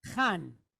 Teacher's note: So this is a CH like in the back of the throat.